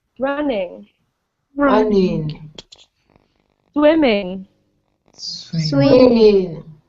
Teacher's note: we stress the first syllable